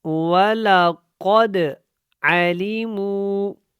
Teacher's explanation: قاف دال زبر قد کو جب پڑھنا ہے تو یہاں پہ قلقلہ ہوگا۔ عَلِمُوا کا جو واو ہے یہ واو مدہ ہے، کیونکہ اس سے پہلے پیش ہے اور یہ واو ساکن ہے، اس کو بھی آپ نے جو ہے لمبا کرنا ہے۔